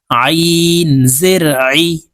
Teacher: আইন হরফ হলকের মধ্যখান থেকে চাপ দিয়ে উচ্চারণ করতে হবে নিচের দিকে ধাবিত করে তাড়াতাড়ি করে চাপ দিয়ে উচ্চারণ করব আইন